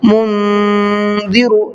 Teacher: اس میں بھی آواز کو گھمانا ہے، ناک میں چھپانا ہے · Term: اخفا